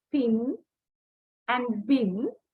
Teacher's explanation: If you say pin and bin, you will notice that for the initial sound, in each word, air is built up behind the 2 lips and then release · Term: bilabial stop